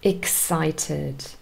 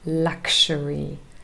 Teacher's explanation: the x here forms a k s sound so it's really two sounds that represent x and both of them are unvoiced